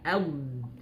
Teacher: Nah, angin tidak keluar berarti dia jahr ya. Nafasnya tidak keluar.